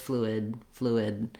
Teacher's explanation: So you may hear fluid with a strong D or just fluid, fluid. I close my tongue for the D, but I don't necessarily release it. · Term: stopped D